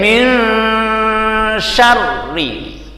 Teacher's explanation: nunnya mlebu ning nggon shin, ning isih sethithik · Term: ikhfa